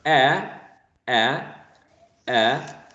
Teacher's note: as in cat the tongue goes to the bottom of the mouth so this would be a low vowel sound